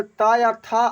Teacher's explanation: ता वर्ग का उच्चारण स्थान जो होता है ये दंत होता है।